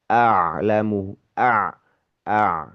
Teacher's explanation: A jadi hamzah fathahnya dibaca dulu a kemudian baru diikuti oleh ain sukun a gitu ya. Gitu tidak saling mempengaruhi gitu ya berurutan.